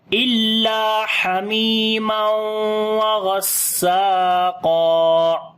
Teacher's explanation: غین کو موٹا پڑھیں گے، سین کے اوپر صفت صفیر اور ہمس آئے گی